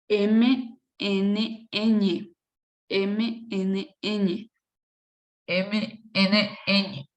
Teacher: Como se puede observar, pasa por los órganos nasales, es decir, la nariz. El aire apenas roza los órganos nasales.